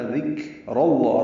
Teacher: ذال کاف باریک ہیں، ذال کو کاف سے ملانا ہے، کاف پہ ہمس ہوگا، ذکر اللہ، را پر پڑھیں گے، زبر کی وجہ سے لام اس میں جلالہ بھی پر پڑھیں گے، تو ذکر اللہ۔